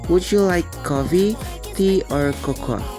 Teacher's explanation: Dan itu berintonasi naik pada setiap alternatif kecuali yang terakhir, di mana intonasi atau nada bicaranya menurun.